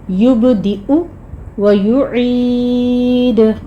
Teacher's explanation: انہو ہوا یبدئ و یعید، ان پہ غنہ کریں گے، ہو کو آپ نے 2 کاؤنٹ کرنا ہے، یبدئ میں با کے پر قلقلہ کریں گے، اور یہاں پہ آپ نے یا دیکھ رہے ہیں، یبدیو نہیں کہنا آپ نے، یبدئ حمزہ کے اوپر ضمہ ہے، پیش ہے، اس لیے آپ نے او کی ساؤنڈ لانی ہے، یبدئ و یعید، عین کو وسط حلق سے ادا کرتے ہوئے آخر پہ دال کے پر قلقلہ کر لیں گے، انہو ہوا یبدئ و یعید، انہو ہوا یبدئ و یعید، زبانی پڑھنے کی کوشش کیجیے۔